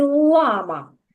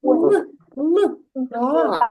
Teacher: у слові Лама перший звук приголосний твердий л